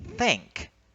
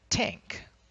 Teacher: The voiceless th, as in the word think, not tink.